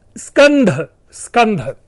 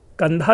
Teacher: स्कंध कंधे को कहा जाता, स विलुप्त होकर के कंधा शब्द बचा रह गया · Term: आदि व्यंजन का लोप